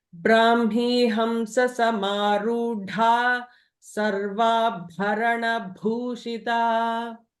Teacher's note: So Sarva Bha and Bhu both are Mahapranas. You have to emphasize a lot more on those letters.